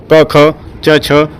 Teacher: क ख च छ ये होते हैं तुम्हारे अघोष